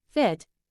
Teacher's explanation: the lower lip lightly touches the upper teeth and the air is forced through the small gap between them this creates a friction-like sound as in the word fit similar